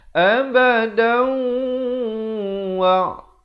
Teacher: Abadan jadi abada. Kalau sahabat-sahabat nak wasal, jadi kena baca di sini dengan idgham bi gunnah kerana tanwin bertemu waw. Masuk beserta dengung 2 harakat.